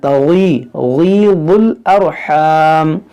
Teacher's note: देखिए वमा तगीदुल, बहुत लाम पेश दुल, यहाँ गैन हुर्फ़े मुश्तालिया है, इसको मोटा करेंगे